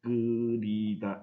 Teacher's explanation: 발음을 할 때 히읗이 탈락하는 경우